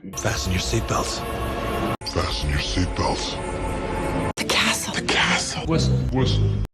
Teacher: في الكلمات دي ما نطقناش اصلا حرف التي، كأنه مش موجود، تجاهلناه تماما